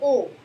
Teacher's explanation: जब हम ओ बोल रहे हैं तो हमारे होठ कैसे हो गए, गोल हो गए। जब हम ओ बोल रहे हैं, अगर हम ओ बोल रहे हैं तो हमारे होठ क्या हो गए, वृत्ताकार भी हो गए।